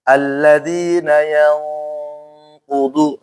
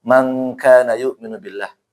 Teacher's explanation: Nah, yang makanya pakai ang dia ya. Kalau khusus qaf ini pakai ang. Dan juga kaf juga sama ang, tapi angnya tipis teman-teman. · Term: ikhfa hakiki